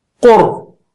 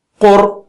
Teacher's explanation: اسی طرح را پر سکون کے ساتھ پھر قر. قر جو ہے قو اونچا ہے اور را موٹا ہے تو اس طرح جائے گا قر.